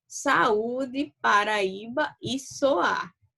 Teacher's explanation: Diferentemente do ditongo, no hiato nós temos 2 vogais, tá certo? O encontro de 2 vogais, mas elas ficam em sílabas separadas. Quando vamos fazer a separação silábica, elas se separam.